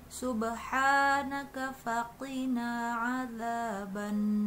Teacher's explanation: Nunnya juga bertasydid, jadi harus ditahan sedikit.